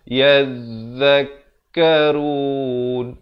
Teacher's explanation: Zal di hujung lidah